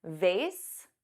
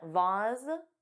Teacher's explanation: Both pronunciations, vase, which rhymes with face, and vase, which has an ah but a z sound